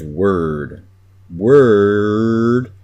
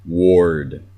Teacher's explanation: Word, you don't have to bite into those R's as hard as I am. But word has an ER sound. It doesn't have an or sound. You don't say ward if you mean word.